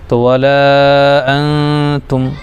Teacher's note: میم ساکن کے بعد میم اور با کے علاوہ کوئی بھی حرف آئے تو اظہار شفوی ہوتا ہے، تو یہاں پر یہ اظہار شفوی ہے۔ تو ہم اس میم کو جلدی پڑھیں گے، یعنی ظاہر کر کے جلدی پڑھ دیں گے. تو ولا انتم، عین پر کھڑا زبر ہے، کھڑا زبر الف مدہ کے برابر، ایک الف کھینچیں گے جیسے آ.